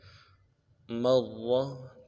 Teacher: را کے اوپر تشدید ہے، زور دیں گے، اور را کو موٹا کریں گے